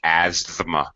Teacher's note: we don't really pronounce the th Asma we don't do that this is actually very common where th is between two other consonants it's very common to reduce it or drop it in English pronunciation · it has the th here which is uh basically under pronounced or not even pronounced at all asthma we don't really pronounce the th Asma we don't do